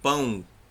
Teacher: é escrito com O. Mas o som é de U. Pão. Não vai puxando pro pão.